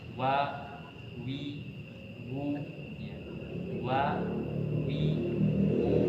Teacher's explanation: Maka untuk huruf waw ini terkhusus untuk dimonyongkan, ya, walaupun fathah, kasrah atau dhamma.